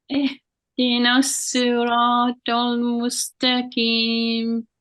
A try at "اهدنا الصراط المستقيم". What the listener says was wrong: Mustaqim, it become key, kaf. Needed qaf. Okay, and the same thing, the heaviness.